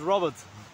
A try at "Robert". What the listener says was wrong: But you're pronouncing this differently. Not Rupert, but Robert he is.